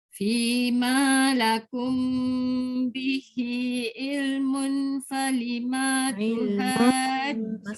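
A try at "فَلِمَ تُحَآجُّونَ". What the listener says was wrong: Masih tak dengung, masih ma tu panjang. علم فلم تحاجون Bunda ambil dekat falima, jangan panjangkan ma.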